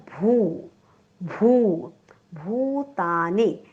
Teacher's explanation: भूतानी, भूता दीर्घ आहे, निरस्व आहे. भ म्हणताना ओठ एकमेकांना चिकटले पाहिजेत.